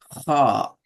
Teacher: அந்த தொண்டையினுடைய காரல் பகுதி பகுதி கரகரப்பான அந்த பகுதியிலிருந்து தான் இதுல சவுண்ட் வரணும்